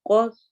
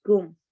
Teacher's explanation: قو موٹا پڑھا جائے گا، اور کم میں کاف باریک پڑھا جائے گا، تو قو کم فرق کرنا ہے۔